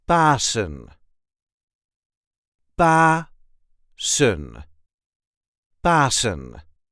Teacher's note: The emphasis is on the first syllable.